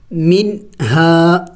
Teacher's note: یعنی نون کو ظاہر کر کے پڑھیں گے، اخفا نہیں کریں گے